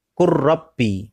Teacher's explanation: Jadi lamnya diabaikan langsung masuk ke huruf ro